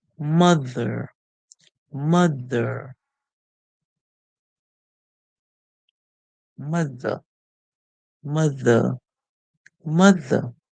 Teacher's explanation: T and H together make one sound. We get tongue between our teeth.